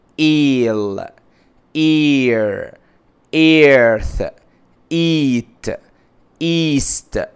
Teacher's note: بنطقها كانها الف وتحتها كسره وازود ياء شويه، بنطقها الصوت كده اي like eel ear earth eat east.